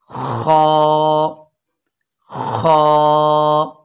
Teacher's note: इसके बाद है खा, और ये हलक के ऊपर वाले हिस्से से, जिसे इब्तदाई हल्क कहते हैं, ये अदा होगा